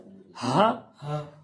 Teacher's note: یہ حلق کے بالکل نیچے والے حصے سے، جو آپ کے سینے کی طرف ہے نا حصہ، وہاں سے منہ کھلا رکھنا آپ نے اور زوردار آواز نکالنی ہے